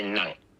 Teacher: And in fact, in the northern Vietnamese accent, you can still hear people say, for the word nang, they say nang. It's a low tone with a glottal stop.